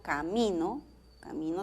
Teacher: camino tiene acento en la segunda sílaba